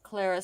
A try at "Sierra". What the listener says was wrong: Sierra, honey. It looks like an L, but it's Sierra. It's in the Spanish. It's Sierra.